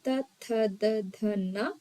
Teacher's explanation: ದಂತದಿಂದ ಅಥವಾ ಹಲ್ಲಿನ ಸಹಾಯದಿಂದ ಉಚ್ಚಾರಣೆಯಾಗುವಂತಹ ಅಕ್ಷರಗಳನ್ನ ನಾವು ದಂತ್ಯಾಕ್ಷರಗಳು ಅಂತ ಕರಿತೀವಿ.